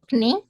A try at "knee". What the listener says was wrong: Iya, knee. K-nya itu silent ya, bacanya knee.